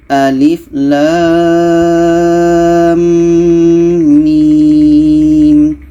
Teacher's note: Dan lam dan mim ini, lam termasuk huruf 8, ni lam, mim pun termasuk huruf 8. Maka lam mim ini dibaca 6 harakat. Dan di sini terjadi proses idgham. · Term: mad lazim harfi mutsaqqal